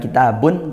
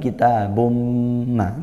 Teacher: tanwin bertemu mim idgham bighunah dibaca masuk dengung